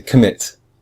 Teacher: we say mit much stronger than com. We say commit.